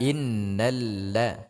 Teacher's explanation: jangan la menjadi tebal